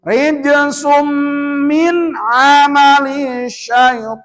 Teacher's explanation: Memasukkan suara n-nya dimasukkan kepada mim, sehingga pembacaannya tidak ada bunyi n, malah jadi m. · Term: idgham bigunah